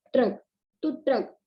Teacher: जब हम ट्रक बोलते हैं तो टा के और रा के बीच में आ नहीं सुनाई देता।